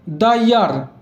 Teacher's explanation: ইয়ার অন্তঃস্থ দিয়ে উচ্চারণ শুরু হয়, তাই এর আগের দাকে দা বলবো, যেহেতু অন্তঃস্থ একটা কনসোনেন্ট সাউন্ড হয়।